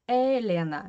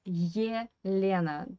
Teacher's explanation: Don't forget about this short Y sound in the beginning of this Russian name.